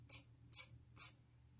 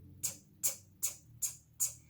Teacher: that really sharp sound with the tongue tip right behind your front teeth